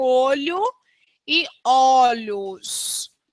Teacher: Alguns vocábulos sofrem alteração de timbre na vogal tônica ao serem flexionados, como acontece com olho e olhos.